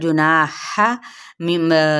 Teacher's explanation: जुनाह यहाँ पे भी ना पे मद्दे असली बिल अलिफ और हा बारीक अदा करेंगे वस्ते हल्क से